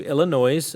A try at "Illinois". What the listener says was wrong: it's Illinois. You don't pronounce the S. Okay, well, you're pronouncing it wrong.